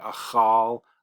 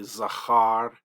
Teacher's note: there are going to be a lot of times when I pronounce this patach identical to a kametz